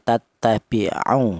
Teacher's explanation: Kalau tidak ada wawunya mati ini maka huruf ain yang berharokat dhammah dibaca pendek 1 harokat